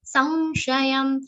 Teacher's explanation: Anuswaran sa will be pronounced like nasal v consonant.